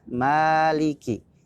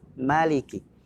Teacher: untuk al-fatihah mim dibaca Dua harokat Maliki sedangkan disuruh Annas dibaca pendek Maliki